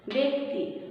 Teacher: জফলা থাকার পরে রস্যইকার থাকায় এটা উচ্চারণটা হবে একারের মতো